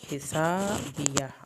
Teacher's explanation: ہا کو ہم نے حلق سے پڑھنا ہے اور سین پہ سیٹی کی آواز نکالیں گے